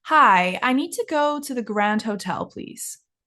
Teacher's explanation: when you're not asking a question and you're making a statement the intonation goes down